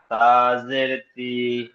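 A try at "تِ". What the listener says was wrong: তাজের তি, তি টান হবে না, জের হারাকাত টান হয় না।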